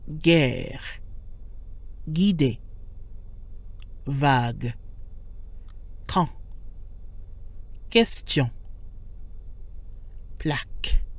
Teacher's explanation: The U doesn't make a W sound when paired with G or Q like it sometimes does in English.